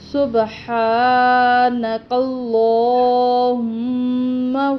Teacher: اب ادھر یہاں پہ کھڑی زبر ہے سبحان، اس میں اس کو لمبا کریں گے، ہا کو، اللہم پر لام کو موٹا پڑھیں گے، لمبا بھی کریں گے، میم پر غنہ ہوگا